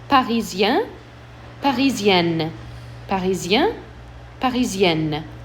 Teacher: So my N's will be pronounced firmly on the feminine